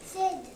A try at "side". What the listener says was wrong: Not Sid. It's two vowels, so that means it's going to say his name.